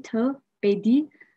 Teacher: Then the alveolar ta, alveolar aspirated plosive, in the initial position